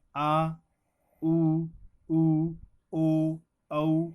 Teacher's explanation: पहले आ भी चुका है तीसरे नंबर पे देखेंगे पश्च स्वर जिन स्वरों के उच्चारण में जिव्या का पिछला भाग सक्रिय रहता है वे पश्च स्वर कहलाते हैं